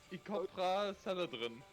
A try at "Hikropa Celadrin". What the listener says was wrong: What is that? What is that weird thing you're doing in your throat?